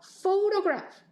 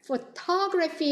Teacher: 처음에 O로 발음이 됐던 게 완전히 줄어서 슈아 발음이 납니다